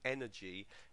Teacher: And the stress falls on the first syllable there, energy, energetic.